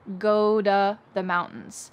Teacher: the word to becomes da. This is very common after the verb go